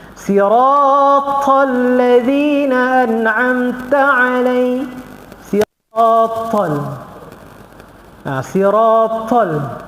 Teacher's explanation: huruf ta dia mengeluarkan angin